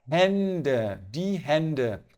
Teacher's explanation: Ele ganhou um trema, então a gente mudou a pronúncia. A pronúncia do A é A e a pronúncia do A com trema é E.